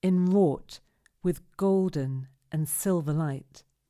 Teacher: we know that we're going to stress the second fourth and sixth syllables